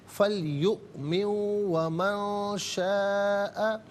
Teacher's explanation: यहाँ पर नून साकिन पर इख्फा करेंगे